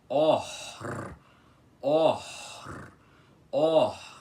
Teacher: Você precisa fazer a aspiração e logo depois dela o R enrolado, assim. Or, or, or.